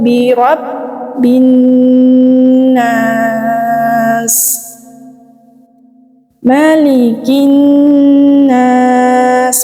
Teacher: ada alif lam bertemu dengan huruf nun, maka dia disebut dengan idgham syamsiyah